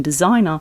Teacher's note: in designer, the S shifts from an unvoiced S to a voiced Z.